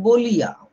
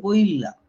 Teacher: Just এই ইটা ল এর পরে ছিল। ল এর আগে চলে গেল।